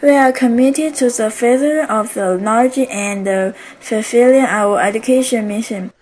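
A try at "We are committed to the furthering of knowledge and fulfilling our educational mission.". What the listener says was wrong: So you're not pronouncing some of these endings here. You said further, but it's furthering. You said education, it's educational. So don't forget, in this case, this is called a grammatical word ending, and this is the adjective suffix that attaches to the noun to change it to an adjective.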